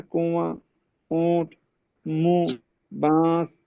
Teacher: زبان کو نون کے مخرج سے تھوڑا دور رکھ کر غنہ سے ادا کرنا۔ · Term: इख्फा